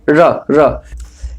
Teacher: इसका उच्चारण करते समय जिह्वा का अग्रभाग जो होता है थोड़ा सा मुड़ जाता है, लुंठित मुड़ जाता है।